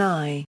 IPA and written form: eɪ (ay)